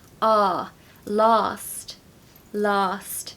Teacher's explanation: in the modern RP accent it's just ah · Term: long A